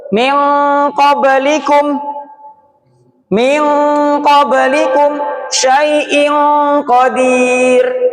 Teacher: Itu jadinya eng karena dia bertemu huruf qof yang jauh sifatnya, jauh makhrajnya dengan nun. · Samar itu bukan berarti jadinya eng, bukan juga jadinya en, tapi menyesuaikan huruf apa. Kalau qaf jadi eng karena dia jauh.